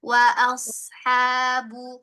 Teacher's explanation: Hati-hati ada tambahan wa as ya. Jangan dipantulkan huruf shadnya ya. Dia tidak ada sifat qalqalah. Jadi alirkan saja rakhwah mengalir suaranya. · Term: huruf sodnya